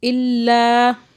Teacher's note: اتنا کھینچے کہ واضح فرق محسوس ہو کہ آپ نے کھینچا ہے ایک الف کے برابر، ایسا نہ لگے کہ جیسے کھینچا نہیں ہے.